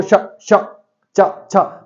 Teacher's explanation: कंठ से नहीं बोला जा रहा, दांत यूज नहीं हो रहा, मूर्धा यूज नहीं हो रही, तालु यूज हो रहा है, शा है ना, आपकी जीभ यूज हो रही है, सिर्फ जीभ, तो आंसर क्या हो जाएगा, तालु।